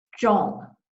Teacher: So for instance, if a Chinese speaker were to say zhong, and I realize it didn't say it as well as a Chinese speaker would, but you know what I'm talking about. The tip of the tongue is arched back and it's touching the roof of the mouth or the hard palate. The teeth are closer together and there's a little tension in the jaw.